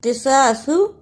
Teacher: قصاصو اسے قصاصو نہیں پڑھنا، دونوں صاد کی جگہ پہ سین ادا نہیں کرنا